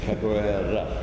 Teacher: the R isn't hard like it is in English. It's not capoeira.